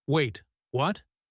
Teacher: the excited way, light, bright, almost giggling